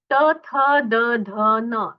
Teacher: त थ द ध न, इनका उच्चारण दंत्य है